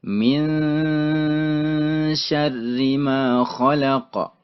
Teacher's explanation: Ada nun mati bertemu dengan shin. Maka cara bacanya ditahan.